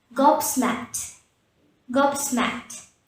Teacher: So at the end you should say t instead of a d.